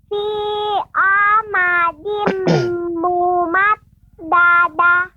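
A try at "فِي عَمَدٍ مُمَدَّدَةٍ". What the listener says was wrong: Kemudian pengucapan amadin, ainnya lebih ditampakkan lagi ya, Dek ya. Fi amadim, sehingga tidak seperti amadim, seperti alif atau hamzah. Fi amadim. Ada beberapa catatan untuk adik, nanti dilatih ya, diperbaiki, terutama misalnya pengucapan ain ya, jadi jangan sampai menjadi huruf alif ya. Fi amadim ain ya.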